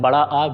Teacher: बड़ा आ विवृत होता है जिसके उच्चारण में मुख द्वार पूरी तरीके से खुला रहता है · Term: विवृत स्वर